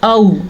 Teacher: औ हमज़ा ज़बर वाओ, औ ये लीन है, इसको नरमी से पढ़ते हैं और खींच के या लंबा करके नहीं पढ़ते।